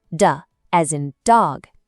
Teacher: D is a short tap of the tongue